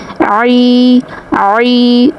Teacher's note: عین کی ادائیگی وسط حلق سے ہوگی، گلے کا جو درمیان والا پارٹ ہے اس پر ہلکے سے فنگر پش کرنی ہے اور عین کی ادائیگی کرنی ہے۔